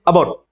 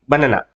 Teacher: ఈ అ అనే శబ్దాన్ని శ్వా అని పిలుస్తాం. అంటే అత్యంత షార్ట్ సౌండ్ తో